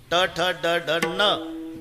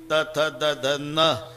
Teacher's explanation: नळ्याचा न उच्चारा तर जीभ दाताला स्पर्श करणार बाणाचा न उच्चारा अजिबात दाताला लागत नाही टाळूला हे इतकं जवळजवळचं · ट ठ ड ढ न दाताशी संबंध नाही. त थ द ध न दाताशिवाय उच्चार नाही. हे इथंच आहे जवळ.